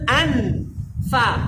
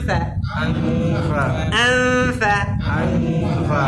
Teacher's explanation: ঠোঁট থেকে না, নুনের উচ্চারণটাকে ঠোঁটের পাশে নিয়ে আসতে হবে। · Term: ইখফা